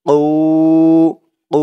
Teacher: ও ও এক আলিফ টান, পেশের পরে ওয়াও সাকিন